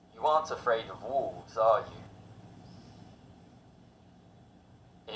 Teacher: If the answer is certain, the intonation falls. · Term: question tags